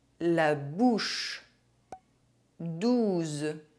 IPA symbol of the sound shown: u